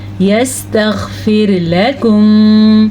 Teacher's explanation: را کو باریک پڑھنا ہے کیونکہ را سے پہلے زیر ہے